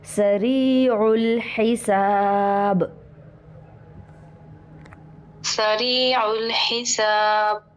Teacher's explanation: سری میں دیکھیے را باریک ہوگا، سین بھی باریک